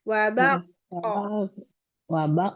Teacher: Wabar kan ada rnya wabar. Baru ee qofnya karena waqaf dia kan ada sifat qalqalah ya